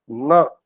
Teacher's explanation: When we pronounce Na, then also your tongue touches your upper row of teeth. But pronunciation coming through nose. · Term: Anunasik Vyanjan